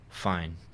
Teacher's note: with a downward intonation, that means it's not fine